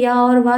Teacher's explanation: तो इसमें ये सिर्फ 2 ही होते हैं, या और वाह जो है ये अर्धस्वर कहलाते हैं। इनके बोलने मुख द्वार थोड़ा सकरा सा होता है, थोड़ा सा खुलता है ताकि हवा पास हो जाए, तो ये अर्धस्वर कहलाता है।